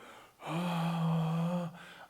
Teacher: i'm flowing the air freely but my vocal cords are loose and they're not they don't have a touch to them and